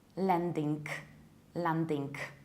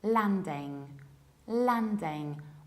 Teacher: It is landing, landing, with a very broad A, not a, and no final K. Landing, Or in the American accent, a little bit wider, landing, landing.